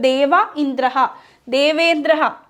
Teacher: ദേവ ആ ഇ എന്നുള്ളിടത്ത് എന്ത് വന്നു ആ ഇ എന്നുള്ളത് എ ആയി ഗുണം വന്നു അപ്പൊ ദേവേന്ദ്രഹ എന്നുള്ള രൂപമാണ് കിട്ടിയത് ഓക്കേ അപ്പൊ ദേവേന്ദ്രഹ എന്ന് വരുമ്പോൾ ഇവിടെ